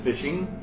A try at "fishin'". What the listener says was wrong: No, there's no G in fishing.